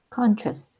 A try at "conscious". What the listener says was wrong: you're about 80 to 90% there, but it seems as if there's almost a T sometimes